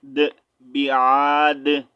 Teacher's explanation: جب یہاں پر آیت کمپلیٹ ہو رہی ہے سٹاپ کریں گے تو بیعاد دال کو ساکن کریں گے